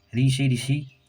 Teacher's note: ऋ से ऋषि इसका भी उच्चारण स्थान मूर्धा से होता है।